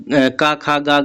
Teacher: क ख ग घ ए आपके कंठ से उच्चारित होते हैं